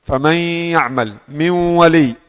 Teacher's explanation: Di suara ditulis ada tapi di suara diucapkan tidak ada nun. Tapi masih ada suara ghunah. Karena suara gunah ini yang bukti ini bukti ada nun di sini. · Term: idgham naqis